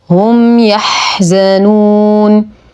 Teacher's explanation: لدينا ميم ساكنه وبعدها حرف الياء الحكم اظهار شفوي مع غنه ناقصه